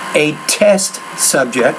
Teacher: make that tea with a little bit more air aspirate more out of the vocal tract